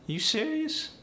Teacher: the aav dialect has a wider pitch range